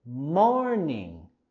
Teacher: queremos subir la entonación, nuestra voz y entonación en la primera sílaba de morning